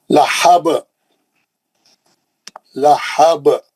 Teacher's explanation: آخری آیت یہ زبر کو نکال کے جزم لگاتے ہیں. یہاں پہ آیت ختم ہو رہی تو روکنے کے لیے تو ہم جزم لگاتے ہیں، انہیں خلخلہ کریں گے، کیونکہ با جو ہے خلخلے کا حرف ہے